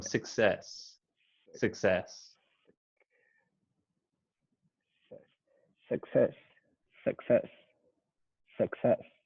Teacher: i wouldn't say the you i would say more like the schwa